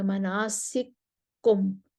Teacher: سوسی ادغام لے کر آئیں گے، کاف کا کاف میں ادغام ہو جائے گا، مناسککم ایسے کہیں گے، اور آگے کسر کریں گے.